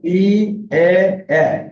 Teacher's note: তিনটা ধ্বনি আছে যেখানে আমাদের ঠোঁট জায়গা থেকে প্রসারিত হয়, এই ধ্বনিগুলোকে বলা হয় প্রসৃত স্বরধ্বনি।